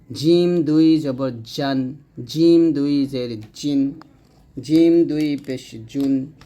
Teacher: জিহ্বার মধ্যখান আর এই যে অংশটা এটাকে হল তালু বলা হচ্ছে জিহ্বার মধ্যখানটা তালু সঙ্গে লাগবে